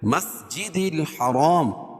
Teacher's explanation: را کو پر پڑھیں گے اور الف سے پہلے را کے اوپر زبر ہے تو الف مدہ ہوگا